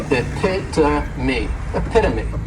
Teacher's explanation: the third syllable has that schwa and the last syllable is that long e